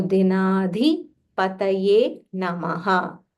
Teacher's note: Here the dha is Mahaprana.